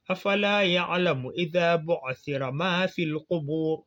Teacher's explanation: ça ne se dit pas ra, ça se dit ar. Donc c'est précédé d'un damma qu'on tire. Donc ici le ar doit être alourdi.